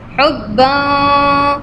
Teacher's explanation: You can see tanween, then jim is there from ikhfa letter, so tongue will be in the middle.